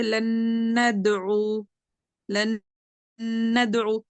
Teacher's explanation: हम ये जो गुन्ना कर रहे हैं ना, ये नून मुशद्दद का गुन्ना कर रहे हैं, मगर इदगाम ताम ही हो रहा है यहाँ पे।